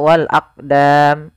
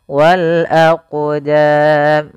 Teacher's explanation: Kemudian pada lafal aqdam, di sini ada huruf qaf yang disukunkan. Maka ketika ada huruf qaf atau yang semisalnya yaitu huruf qalqalah, maka cara membacanya yaitu kita memantulkan huruf qafnya